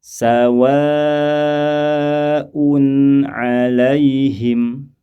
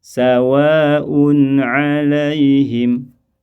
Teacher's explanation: mad wajib muttasil lama panjangnya yaitu kurang lebih seukuran empat atau lima harakat · yaitu kurang lebih seukuran empat atau lima harakat mad wajib muttasil Mad muttasil dibaca empat atau lima harakat